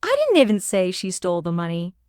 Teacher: The stress on she emphasizes that someone else, not her, may have stolen it.